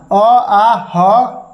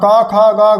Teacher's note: ये सभी जो है दोस्तों ये कंठ से होता है यानी कि कंठ से इसका उच्चारण होता है